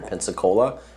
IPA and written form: ˌpɛnsəˈkoʊlə (Pensacola)